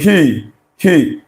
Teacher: if at all you're feeling anything like a vibration of the vocal cord, it's very minimal, very small, that we can neglect any vibration there. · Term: voiceless